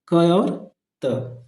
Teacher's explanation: क और त ये अघोष और अल्पप्राण दोनों होता है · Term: अघोष अल्पप्राण